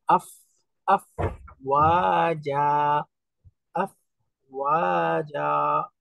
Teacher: তো ফি দীনিল্লাহি আফওয়াজা, আফ আফ অর্থাৎ ওই যে ঠোঁটের মাঝখানে দাঁতের উপরের অংশটা স্পর্শ হবে